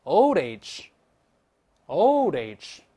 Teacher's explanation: 注意▁old▁跟▁age▁还有连读